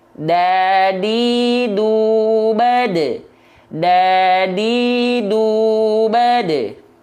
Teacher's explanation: Ujung lidah kita menyentuh dengan pangkal gigi seri atas seperti ini. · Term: dal